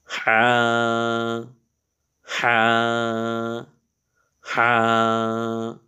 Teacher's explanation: এই হাটার উচ্চারণ একটু গলার মধ্যে চেপে করতে হয়।